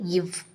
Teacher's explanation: கீழுதலும் மேல்வாய் பல்லும் இணைவதால் பிறக்கக்கூடியது இவ்.